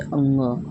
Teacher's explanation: अंग एक ऐसा होता है जो नाक और मुख दोनों के द्वारा बोला जाता है। नाक और मुख दोनों से मिलाकर बोला जाता है, वो आपका अनुनासिक हो जाता है।